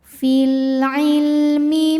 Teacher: lam sukun ini dinamakan dengan lam mutlak kita baca lamnya dengan jelas